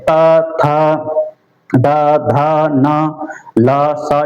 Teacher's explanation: दांतों का उपयोग होता है इनको बोलने में।